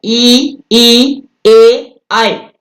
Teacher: अग्र स्वर का मतलब हो गया जिह्वा के अग्रभाग से जिनका उच्चारण होता है